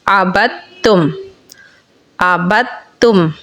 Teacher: یعنی با کو تا میں ملا کے پڑھ لیا جائے گا۔